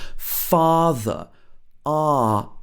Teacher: a very british sound ah when she says father